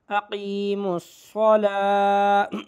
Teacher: اس لام کے بعد جو واو ہے یہ واو نہیں پڑھی جائے گی ، یہ کھڑا زبر واو پہ نہیں ہے بلکہ لام پہ